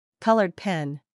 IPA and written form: ˈkʌl.ɚdˈpen (Colored pen)